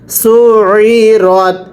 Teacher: এরপরে সিনা আইন পেয়ে সু, আইনটা উচ্চারণের সময় গলার মধ্যে চাপ দিয়ে পড়বেন। সু আইন জের ই, সু ই, রতা জবর রত, সু ই রত।